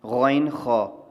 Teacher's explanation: اور غائن، خا، آپ کو یاد ہو کہ حروف حلقی ہم نے پڑھے تھے، غائن، خا، تو وہاں پہ جو منہ کی جانب حلق کا حصہ ہے وہاں سے یہ 2 ادا ہوتے ہیں